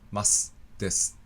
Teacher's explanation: I don't think we round our lips at all when we say masu or desu .